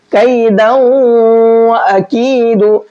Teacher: اچھا, قیدہ اس صورت میں پڑھیں گے جبکہ یہاں پر آیت کریں گے, اور اگر آیت نہیں کرتے ہیں تو پھر دال کو واو میں ملا کر کے پڑھیں گے اور ساتھ میں غنہ بھی کریں گے